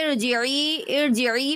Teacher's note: دیکھیے ارجعی، ارجعی پہ یا مدہ ہو رہا ہے، را کو باریک پڑھیں گے، را پر زبر یا پیش ہوگا تو پر پڑھیں گے، را کے نیچے زیر ہوگا تو باریک پڑھیں گے